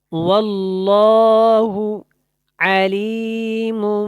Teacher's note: لام جو ہے یہاں پہ موٹا ہے، اس کو آپ نے موٹا کر کے پڑھنا ہے کیونکہ یہ اللہ والا لام اس سے پہلے زبر ہے.